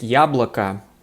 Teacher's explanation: the o on the end of yablake is unstressed so it totally sounds like an ah